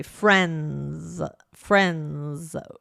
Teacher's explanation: with some words that end in NS, we often will drop the D sound. So, for example, instead of the word friends, right, we might say friends.